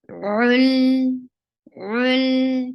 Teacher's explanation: And for dhamma, circle your lips. Join it with lam, and lam will get tawassut. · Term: lam with tawassut